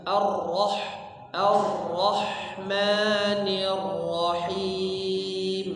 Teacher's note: sama di Basmalah r-nya ditebalkan